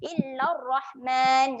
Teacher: dekat sini huruf ra kita akan baca dengan ra yang tebal